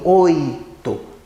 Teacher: esse I de oito, ele desaparece, né? Então, ele é mais fraquinho, oito. Ele quase você não percebe, né? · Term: semivogal